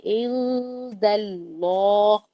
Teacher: عین نون دال کے درمیان میں اخفا ہو رہا ہے، دال کی طرف زبان رکھ کر نون کا غنہ کریں گے. عند اللہ، اللہ جو ہے اس کو موٹا پڑے گی.